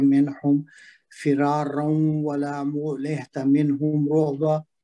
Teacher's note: यहाँ पे फिरा पे अलिफ मद है, 2 हरकत लंबा करेंगे। रा पे तनवीन है जिसका वाव के साथ इदगाम होगा, हरूफ यरबलून में से है, माउन्ना।